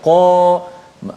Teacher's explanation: yang isti'la, tebal kan, huruf yang tafkhim, terangkat pangkal lidah